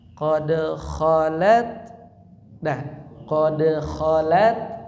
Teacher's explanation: jadi posisi lidahnya tetap di ta jangan geser ke depan · ketika baca ta sukun itu jangan dipantulkan